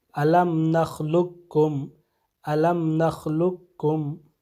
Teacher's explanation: حرف قاف کی آواز نہیں آئے گی بلکہ حرف کاف کی آواز آئے گی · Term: ادغام